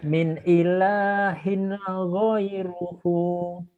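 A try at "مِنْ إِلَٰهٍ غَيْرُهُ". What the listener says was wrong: Nggak ada yang salah Pak. Cuman di minnya itu kurang kurang mesra. min, min, min. Bapak kemarin ketemu si Gimin nggak sih? Si Gimin, Wagimin, Gimin, Min.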